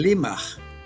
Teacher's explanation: También la R se convierte en L o se realiza en L, como L, lateral alveolar. Rimaj se convierte en limaj, luego lima.